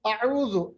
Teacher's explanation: عین جو ہے یہ وسط حلق سے نکلتا ہے. اعوذ، دیکھیں ذال کو بڑا نرم پڑھنا ہے کیونکہ ذال کا مخرج جو ہے زبان کی نوک اور ثنائے علیہ اوپر کے 2 دانت ان کے ساتھ، ہاں ثنائے علیہ کا کنارہ، ٹھیک ہے.